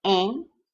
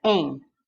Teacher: o N finalizando uma sílaba no interior da palavra, ele é apenas sinal de nasalização daquela vogal